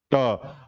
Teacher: वाले भाग जो यहां है ठीक है जीभ जो आगे ये जीभ जो आगे जा रहा है उसके जगह में थोड़ा पीछे हट कर के उच्चारण होता है ट आप च और ट दोनों को करके देखिएगा आपको पता · जीभ जो है थोड़ा पीछे की ओर जा रहा है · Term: ट वर्ग